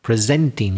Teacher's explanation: Presenting, yeah, I stressed the second syllable. So that was the verb, giving presentations.